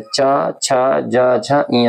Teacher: ये जो च वर्ग होता है स्पर्श व्यंजन का इसका जो उच्चारण स्थान होता है वो तालव्य होता है